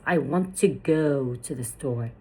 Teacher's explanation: The main stressed words are want, go, store. While words such as to may be pronounced more weakly. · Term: stress-timed